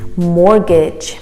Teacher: the t is silent